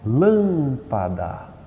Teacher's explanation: lâmpada o lã é o mais forte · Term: antepenúltima